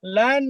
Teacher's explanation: Nah, adapun nun mati ketemu non, ini karena non ya, maka menjadi nun tasdid ya. Lan, nah itu kuat.